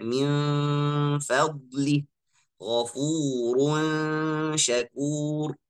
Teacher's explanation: Kalau ikhfa abad, ikhfa yang ba'id itu kita tahu semuanya kayak min fadlih atau ghafurun syakur dekat huruf yang selanjutnya makhraj makhraj misalnya shin harus kita dekat dari makhraj shin ghafurun syakur nun itu disamarkan sebelum atau dekat makhraj huruf selanjutnya